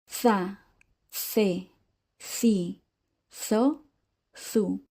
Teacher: the “zeta” sounds for all of these combinations are typical of Spain